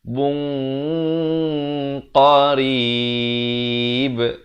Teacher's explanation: Di sini ikhfa, disamarkan 2 harakat dengan tebal.